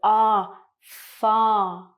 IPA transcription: ɑː